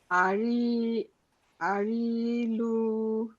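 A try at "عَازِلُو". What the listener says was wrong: এটা র না, এটা হচ্ছে জা। আর জিতেও টান হবে, লুতেও টান হবে, আজিলু।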